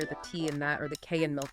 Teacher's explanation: you might hear the T and that or the K and milk being stopped or unreleased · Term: non-release of final consonants